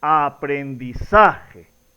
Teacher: La mayor fuerza de voz, por lo tanto, la sílaba tónica está ubicada en la sílaba sa